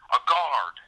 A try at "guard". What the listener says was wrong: he's drawing out the A longer than he should. pronounced guard, not guard.